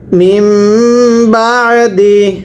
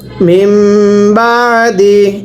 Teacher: সাকিন বাদ দিয়ে পড়তে হয় মিম মিম জের মিম আবার পরে নুন সাকিনের উপরে ছোট্ট মিম থাকলে নুন সাকিন বাদ দিয়ে পড়তে হয়